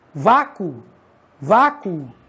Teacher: quando você pronuncia vácuo, o O de vácuo tem som de U também